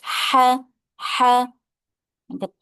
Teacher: Dibaca dari tenggorokan bagian tengah dan terdengar lebih halus.